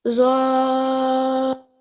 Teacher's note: you're producing a 2 second nasal sound at the end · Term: ikhfa sound